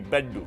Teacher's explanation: the retroflex D consonant instead of the double L